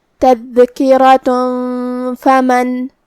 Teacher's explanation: فا حروف الاخفاء میں سے ہے اور اخفاء کا معنی ہے چھپا دینا. تو ہم یہ تنوین کو چھپاتے ہوئے اور غنہ کے ساتھ یہ حکم کو ادا کریں گے